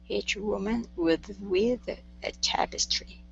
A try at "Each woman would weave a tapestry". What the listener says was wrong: move your tongue back from your teeth instead of saying with weave would weave with a d